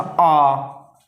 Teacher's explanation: पश्च स्वर यानी जीभ के पिछले भाग से बोले जाते हैं